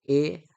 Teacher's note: कंठ आणि तालू यांचा एकंदरीत जो स्वर आपल्याला पाहायला मिळतो तो आहे थोडक्यात ए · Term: कंठतालव्य